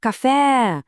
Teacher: viu só como o fé é que estica, ele se alonge. Essa sílaba que a gente prolonga quando chama é sempre, mas sempre mesmo a sílaba tônica.